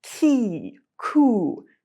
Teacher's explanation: with ki, your tongue is hitting the roof of your mouth a little bit further forward on your hard palate. And with ku, your tongue is hitting a little bit further back. And that's because of the vowels. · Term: k sound